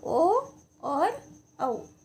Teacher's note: ओ की ध्वनि तो जो है कंठ से निकल रही है, लेकिन उसका जो उच्चारण स्थान हो रहा है वो होठ हो रहा है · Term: कंठोष्ठम